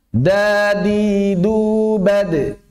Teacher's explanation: Makhrajnya sama dengan ta, sifat yang beda dengan ta adalah jahr dan hamsnya. Dal jahr, ta hams.